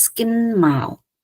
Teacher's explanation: Mao gets the primary stress, whereas kin gets the secondary stress.